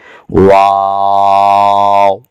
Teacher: دونوں ہونٹوں کو گول کر دیں گے، شروع میں بھی اور آخر میں بھی ہونٹ گول ہی ہوں گے، آواز بند ہو جائے گی۔